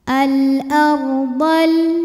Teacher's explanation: dibunyikan secara tafkhim sebab sebelumnya berbaris fathah maka rnya ditebalkan